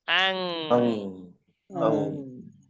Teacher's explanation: 8 হরফ ছাড়া বাহিরের অন্য হরফ এসেছে। গুণনা করতে হবে, অনুস্বরের উচ্চারণ দিতে হবে, বাংলায় অনুস্বরের উচ্চারণ আং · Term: গুন্না